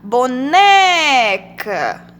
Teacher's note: então a gente já sabe que a sílaba tônica é o né